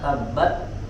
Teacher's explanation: ada angin sedikit saja ditahan suaranya di makhroj huruf ta tabat kemudian keluarkan habasnya sedikit kita BAB jangan terlalu lama juga